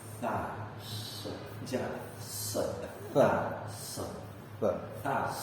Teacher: Cara pengucapan tha itu ujung lidah digigit sama gigi atas gigi bawah. Nah. Terus anginnya rada gedean.